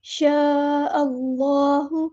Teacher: مد متصل ہے، 4 یا 5 کاؤنٹ میں لمبا کرنا ہے